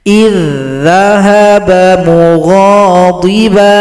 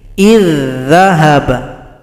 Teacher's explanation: huruf dza yang pertama tidak dibaca karena telah gabung pada huruf dza yang kedua. Jadi hamzah loncatkan saja pada huruf dza. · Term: Idgham mutamathilain